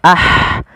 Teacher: Pada lafal ha sukun ada sifat hamusnya